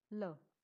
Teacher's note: It's very short, neutral sound